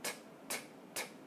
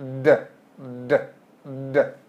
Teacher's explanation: So again, looking at T and D, t, t, t, d, d, d, you can feel that buzzing with the D that you can't feel with the T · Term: voicing